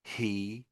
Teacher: It's sort of a heavy breathing, the H's.